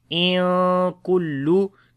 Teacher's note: After the noon sakin, the next letter is kaf, which is from ikhfa letters. We make ikhfa here, which is the light ikhfa. In kullu. Kaf we read in light sound.